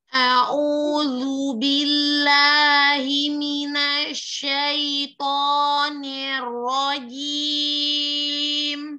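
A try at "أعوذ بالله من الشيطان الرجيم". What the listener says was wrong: Ronya enggak mencucu, enggak monyong. Syaitonir rajim.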